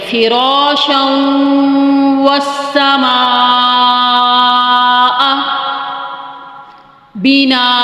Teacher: را کے اوپر زبر ہے تو اس کو موٹا پڑھیں گے ، فراشا والسماء بناء، اگر وقف کریں گے تو دو زبر